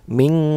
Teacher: nun sukun bertemu dengan huruf ta maka dibacanya ikhfa samar dan berdengung namun suara samarnya lebih besar daripada suara dengungnya jadi kayak ujung